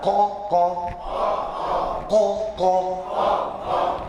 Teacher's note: ज़बान की जड़ उस बराबर ऊपर के, तालु के साथ लगा कर